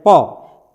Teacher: दोनों जो लिप है वो टच कर रहे हैं पी बिना लिप को टच किया नहीं कर सकते हैं आप